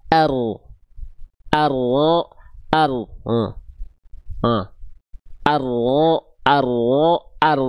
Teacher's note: huruf ro itu dilafalkan bukan betul-betul dari ujung lidahnya, tapi dia dilafalkan dari punggung lidah